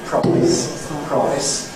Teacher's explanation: [aɪ] as in ‘price’ [praɪs], in turn, becomes [ɒɪ], [prɒɪs], which may have some lip-rounding [prɒɪs], though it doesn’t have to, [prɑɪs].